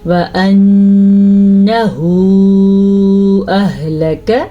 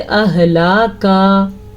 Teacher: اچھا جی، یہاں پہ غنّے کے ساتھ ساتھ ہا کے اوپر مد آئی ہے، الٹا پیش بھی ہے، تو اس کو ہم کھینچ کے لمبا کر کے پڑھیں گے